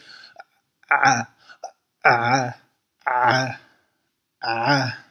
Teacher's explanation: Donc vous prononcez le son A, vous le bloquez en haut de la gorge et de suite, vous le libérez. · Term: Aynon